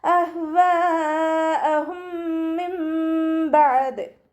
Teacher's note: നൂൻ സാക്കിനയെ മീമാക്കി മാറ്റി മറിച്ചിട്ട് ഒന്നയോടുകൂടി ഓതിക്കൊടുക്കുക. നൂനിൻ്റെ സൗണ്ട് അവിടെ കേൾക്കുകയില്ല. നൂനിനെ മീമിൻ്റെ സൗണ്ടാക്കി മാറ്റി മറിക്കും ചെയ്യുക.